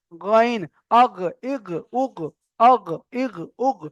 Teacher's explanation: তারপরে 3 নম্বর মাখরাজ ছিল গইন খ। গইন খ একদম কণ্ঠনালীর শেষ হতে উচ্চারিত হয়।